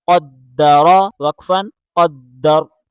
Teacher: را کو موٹا کر کے پڑھیں را زبر را قدر وقفا قدر.